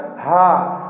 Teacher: हमारे गले से निकलती है आवाज, तो इसीलिए इसको कंठ कहा जाता है